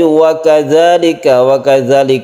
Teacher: satu Alif kita panjangkan karena dia merupakan Mad Thobi'i